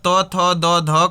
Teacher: पूरा ये तो वर्ग आपका बोला जाता है दांत से